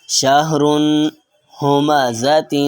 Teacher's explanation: اور ہا کی آواز بغیر رگڑ کے نرمی سے نکلتی ہے